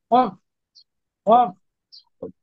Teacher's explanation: জিহ্বার গুড়া তার বরাবর উপরের তালুর সঙ্গে লাগিয়ে